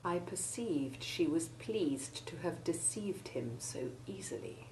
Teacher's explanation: a sentence containing words in which the combinations EI and EA make the identical long E1 sound.